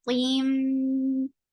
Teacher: Sira, tim, ta is heavy, and there is idgham with gunna. So you're keeping the sound in your nose